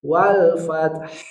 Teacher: apabila kita berhenti, huruf H-nya kita sukunkan, keluarkan sifat hamasnya.